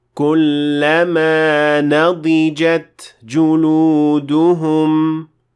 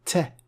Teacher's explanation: So, in order to make sure that the ta is pronounced properly, make sure to completely pronounce the ta, finish pronouncing it first, let the gush of air come out, ta, and then proceed to the next word.